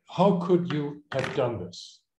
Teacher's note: Falling intonation. So this is not really a question that requires an answer. It requires a response.